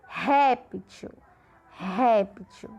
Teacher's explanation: Réptil também é uma paroxítona porque a sílaba de maior intensidade é a penúltima.